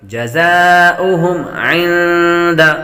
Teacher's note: نون ساکن کے بعد دال حروف اخفا میں سے آ رہی ہیں، غنہ کریں گے